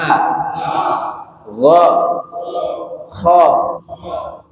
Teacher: Jadi ghaid sama kha tenggorokan bagian atas.